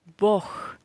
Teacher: But Бог, we pronounce this G as H.